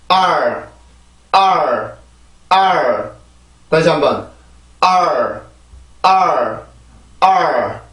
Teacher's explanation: 아래 치조 뒤에 있던 혀 끝이 R 발음으로 옮겨가면서 만들어내는 소리인 거예요. 알죠? 이 발음은 아 발음에서 혀 끝은 아래 치조, R 발음에서 혀 끝은 경구개 쪽으로 올라가 주게 되죠. · 아 발음에서 혀 끝은 아래 치조, R 발음에서 혀 끝은 경구개 쪽으로 올라가 주게 되죠. 붙는 건 아니지만 이렇게 들린단 말이에요, 혀가. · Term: 모음 플러스 R